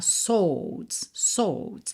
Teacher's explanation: a gente não pronuncia o w de swords